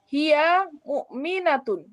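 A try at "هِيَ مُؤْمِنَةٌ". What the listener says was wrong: Yang minnya tidak ditekan suaranya. Hiya mu'minatun. Jangan mu'minatun. Jangan.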